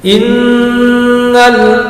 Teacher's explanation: Kita lihat in ada nun yang bertasdid. Nun yang bertasdid di sini hukum bacaannya sama dengan mim yang bertasdid, yakni gunna musaddah, mendengung karena disebabkan bertasdid.